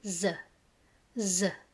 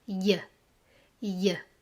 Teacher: Dans le nord, cette lettre se prononce z, z. Et dans le sud, cette lettre se prononce y, y, comme dans caillou, chatouiller.